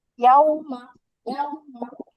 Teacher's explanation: দেখেন এই যে ওয়াও এর উপরে যতন দেওয়া মানে এর মাত্রা আমরা নিরূপণ করছে এখানে, হ্যাঁ। আমাদের দুই ঠোঁট কি হয়ে গেছে, গোল হয়ে গেছে